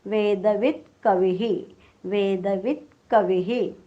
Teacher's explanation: शेवटी वीच्या पुढे विसर्ग आहे, वी ऱ्हस्व आहे, त्यामुळे हा जो विसर्गाचा उच्चार आपण करणार आहोत तो सुद्धा ऱ्हस्वच येणार आहे.